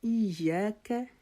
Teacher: کا کو ہم نے نرمی سے پڑھنا ہے. جو ہماری زبان کا پچھلا حصہ ہے ادھر سے اس کا مخرج ہے, لیکن اپنے ہونٹوں کو اسمائلنگ پوزیشن میں رکھنا ہے